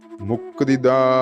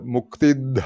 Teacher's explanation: ആ ദ എന്നുള്ളത് അല്പപ്രാണനാണ് തൊണ്ട ചേർക്കാതെ ഉച്ചരിക്കണം